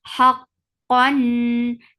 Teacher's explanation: Haqqan, have from middle part of your throat attach with qaf. Qaf will get sifa of shidda. The sound will cut off abruptly. Haqqan, and then there is idhar, and the ruling is idhar and sifa is tawassut.